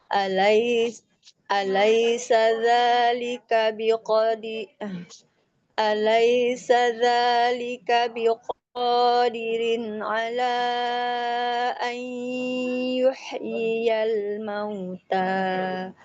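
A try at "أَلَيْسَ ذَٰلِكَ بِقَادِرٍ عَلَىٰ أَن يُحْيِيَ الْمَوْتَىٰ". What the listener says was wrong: Baik. Koreksinya jangan buru-buru.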